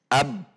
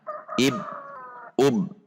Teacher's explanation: Selanjutnya, saat sukun, huruf ba juga memiliki sifat sama dengan huruf hamzah, yaitu syiddah atau tertahan. Perhatikan, ab tertahan, ab langsung tertahan, ib, ub langsung tertahan.